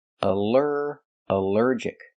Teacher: the ALL is not pronounced all, but pronounced like in cup and up, because it's not stressed.